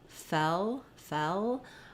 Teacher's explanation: when I move from the eh to the L fell fell there's not a lot of Glide for that l